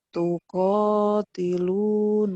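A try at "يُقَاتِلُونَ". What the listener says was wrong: Yu, bukan tuh. Titiknya di bawah. Yuqatiluna fi sabilihi.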